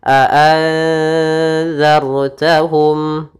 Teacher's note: itu za-nya tipis, ra-nya tebalkan. Jangan juga dibaca a'anzartahum, nanti ra-nya tipis, tapi a'anzartahum.